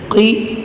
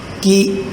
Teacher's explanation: قاف موٹا کر کے ادا کریں گے اور کاف کو باریک ادا کریں گے